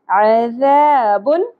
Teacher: عذاب، عین ویسے حلق سے، اور ذال آ گیا ہمارے پاس، ذال کو نرمی سے ادا کرنا ہے، شدت اور سیٹی کی آواز نہیں آنی چاہیے۔ عذاب نہیں پڑھنا ورنہ تبدیل حرف ہو جائے گا۔